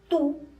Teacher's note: cuando tú dices tú, tu lengua está arriba. Tú, está en tus dientes superiores, ¿no es cierto? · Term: punto de articulación